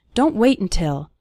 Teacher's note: We almost continue the word wait right into the N sound.